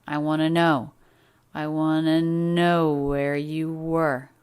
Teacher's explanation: The words want to linked together into a single reduction wanna.